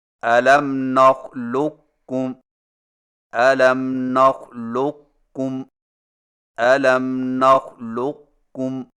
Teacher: قاف کو موٹا اور بغیر جھٹکا کے کاف میں داخل کر کے اس طرح پڑھیں کہ قاف کے موٹا پن کو ظاہر کرنے کے فوراً بعد کاف باریک ادا کریں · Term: ادغام ناقص